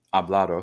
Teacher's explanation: That D, I believe, was originally a T, and then it became voiced because it was sitting between two vowels.